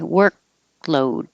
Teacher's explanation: so you don't release the k the tongue goes up high